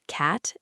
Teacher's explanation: The vowel sound in the word cat, as in the flat wide a, requires you to open your jaw quite wide and spread your lips sideways, almost like a flat smile, while keeping your tongue very low and flat in your mouth